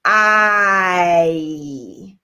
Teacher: So I combine my two sounds together. I combine the ah and the E and then show them I. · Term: vowel I